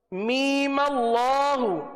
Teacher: می کو ایک الف تک کھینچیں گے